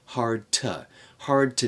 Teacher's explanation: to connect the D and the T there hard to and we're going to reduce the vowel in to